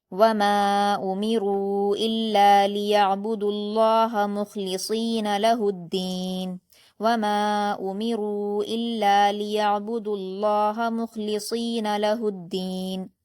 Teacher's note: और आगे अदीना इसमें हरूफ शमसी का कायदा है। इसलिए हा को हम दाल की तशदीद के साथ मिलाकर पढ़ेंगे। लहुद दाल को सख्ती से पढ़ेंगे और या मदद्दा है तो दो हरकात खींच कर पढ़ेंगे।